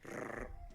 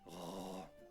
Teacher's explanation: A dramatic change worth its own story, the so-called guttural r. Instead of a front-of-the-tongue trill rrr, it's a back-of-the-mouth r.